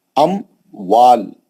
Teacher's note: میم ساکن کے بعد حرف واو آیا, اظہار کے ساتھ پڑھا جائے گا